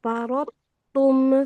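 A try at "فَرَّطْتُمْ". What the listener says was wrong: Ranya tasdid. Ranya tasdid nih. Ranya tasdid. Farrattum. Far. Farra. Farrattum. Farrattum. Farrattum. Roknya tasdid. Roknya tasdid. Farrattum.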